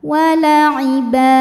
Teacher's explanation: Ketika berhenti di ba hukumnya adalah mad iwad, sebab ada baris tanwin fathah yang diberhentikan. Dibacanya panjang 2 harokat.